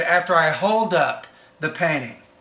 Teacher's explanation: You didn't pause after holding up.